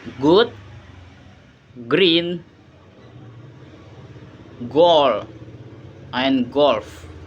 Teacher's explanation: G sound is a voice, flar, and plosive. It is made by the same movement like K, but with vibration of the vocal cords.